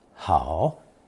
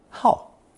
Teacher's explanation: third tone 好 can also be pronounced fourth tone 好 when it means to be fond of or addicted to something